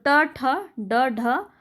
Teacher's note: जिह्वा की उल्टी हुई नोक का निचला भाग मूर्धा से स्पर्श करता है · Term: मूर्धन्य